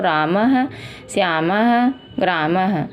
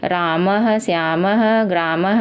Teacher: विसर्ग का उच्चारण कंठ है दोस्तों।